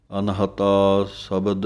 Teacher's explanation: ਅਨਹਤਾ ਪਾਠ ਪੋਲਾ ਪੜ੍ਹਨਾ ਹੈ, ਇਹਨੂੰ ਅਨਹੱਤਾ ਨਹੀਂ ਕਹਿ ਦੇਣਾ, ਪੋਲਾ ਜਿਹਾ ਪਾਠ ਬੋਲਣਾ ਹੈ।